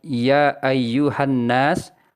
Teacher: setelah huruf nun terdapat huruf alif ini merupakan ciri-ciri dari Mad Thobi'i dibaca panjang dua kali ketukan